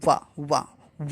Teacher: दंत और ओष्ठ दोनों से निकलता है, दांत और ओंठ दोनों मिलते हैं, वाह। देखो दांत, इसको आप बोलिए वाह, तो दांत और ओंठ तीनों दोनों आपस में मिल जाते हैं, जैसे दंतोष्ठ, बस यही एक ऐसा वर्ण है, आप याद रखिए, दंतोष्ठ दोनों से मिलकर बनता है, ठीक है।